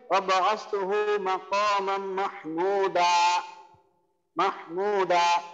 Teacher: দুই জবরের ওয়াকফ করলে এক আলিফ টান হয়